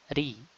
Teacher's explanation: kita ucapkan ro itu tipis dengan kita turunkan bagian belakang dan tidak ada cekungan pada tengah lidah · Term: ra itu tipis